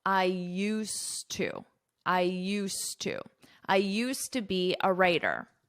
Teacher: Notice my pronunciation. You don't hear this D at all.